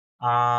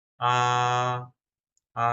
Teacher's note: একদম ফ্ল্যাট, মানে সমান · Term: ফার্স্ট টোন